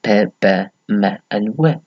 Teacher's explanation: Bilabials, which is lips together. So we are using both lips in producing the following sounds